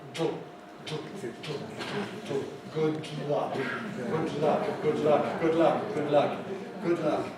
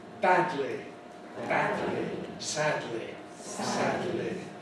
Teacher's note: we take the shortest route to get from one position to the next, which means the tongue tip doesn't move. What happens is the sides of the tongue come down.